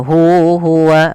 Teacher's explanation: mad silah qasirah di sini dipanjangkan dua harakat juga